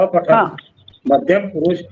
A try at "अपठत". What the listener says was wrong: त पूर्ण आहे ना. त पूर्ण असला की अपठत. लंगडा पाय असला तर अपठत असं झालं असतं. पण अपठत कोणा नाही, अपठत पूर्ण उच्चार झाला पाहिजे तचा.